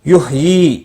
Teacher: یا مدہ ہے، ایک الف کے برابر کھینچ کر پڑھیں گے